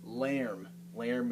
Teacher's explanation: So the A with the umlaut is different. The A with the umlaut has a eh sound.